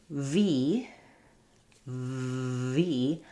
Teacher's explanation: I can actually hold that V sound because it's a continuant sound. And to make the V sound, what I'm doing is restricting where the air can flow.